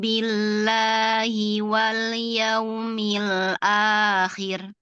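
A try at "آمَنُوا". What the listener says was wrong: Lau amanu. Sempurnakan hamzahnya 2 harokat. Amanu.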